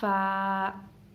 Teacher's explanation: ऊपर वाले दांत नीचे वाले होंठ को लग के अदा होता है फ़ा। और उसके बाद हमारा हर्फ है बा।